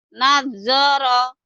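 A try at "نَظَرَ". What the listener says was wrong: jangan ada double ya. Kalau nazoro itu ada sidahnya. Datar aja.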